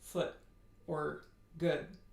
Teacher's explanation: In American English, the lip rounding is really weak.